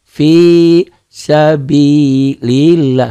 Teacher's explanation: Lafaz Allahnya dibaca tipis, dibaca tarqiq